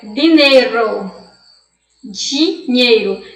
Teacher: É como se eu estivesse falando, né? Um di com um chiado de DCH, né? E isso não existe no espanhol.